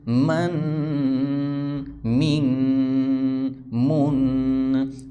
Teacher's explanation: یہاں پر دیکھیں الف کو ساتھ نہیں ملانا، میم الف 2 زبر من نہیں پڑھنا. میم 2 زبر من غنہ کرنا ہے، لاسٹ میں آواز کو جو ہے باہر ناک میں آواز کو چھپانا ہے